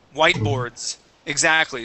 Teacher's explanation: that S at the end is always going to be a voiced S, okay, with the Z sound. It'll always be that voiced S, okay?